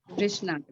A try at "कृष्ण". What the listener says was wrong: आप ई बोलते हैं ना, कृष्णा, ई की मतलब, हाँ, यहाँ पे आप बोलते हैं सवृष, सवृष बोलना चाहिए, मतलब अगर हिंदी में बोलना है तो। मराठी में इसको बोलेंगे वृष, वृष, ऊ की मात्रा लगाते हैं।